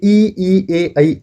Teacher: इनका जो उच्चारण होता है वो आगे के हिस्से से होता है। इसलिए इनको बोलते हैं अग्र स्वर।